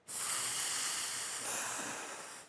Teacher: La première prononciation, ça se dit non-voisé. Non-voisé, c'est-à-dire sans la voix.